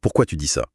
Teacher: structure simple, sujet-verbe et intonation montante.